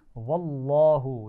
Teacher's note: لام جلالہ ہے، لفظ اللہ کا لام، اس کو موٹا پڑھیں گے